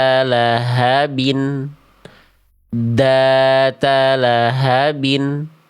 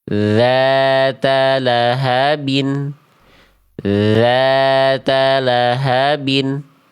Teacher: Akhirnya jalur suara yang harusnya keluar dia tertahan gitu ya. Jadi cuma sentuhkan ujung lidahnya ke ujung gigi sari atas tipis-tipis tidak perlu ditekan kuat-kuat.